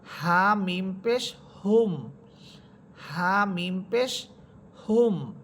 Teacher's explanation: এটা হচ্ছে গুলহা বাতাস একেবারে ছেড়ে দিয়ে পড়বেন